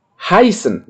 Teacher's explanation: Kemudian EI ya, kita baca sama I ya